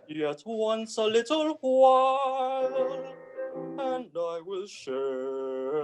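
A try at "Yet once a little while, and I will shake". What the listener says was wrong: You have ba-bum, ba-bum, and I will. You can't go ba-bum, ba-bum, and I will. That goes against the music. So use the energy in the music.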